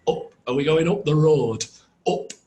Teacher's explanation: In Northern English, it's more u.